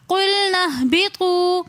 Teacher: بطو میں واو مدہ ہونے کی وجہ سے ہم اس واو کو تھوڑا سا کھینچ کر پڑھیں گے